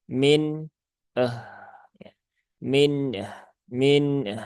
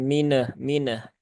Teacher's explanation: tunaikan saja sifat tawasud dari huruf nun, kemudian tunaikan sifat rokhawah pada huruf H